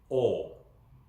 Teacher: Again, as I said before, the sound where it's coming from, where it's originating from, feels very different. So with Korean o, I feel like it's more towards the front of my mouth, the oral cavity.